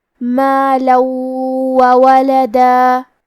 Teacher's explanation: واو حروف الادغام بغنہ میں سے ہے اور ادغام کا معنی ہے حرف کو حرف میں داخل کرنا، تو ہم یہ تنوین کو واو میں ملا کے غنہ اور تشدید کے ساتھ یہ حکم کو ادا کریں گے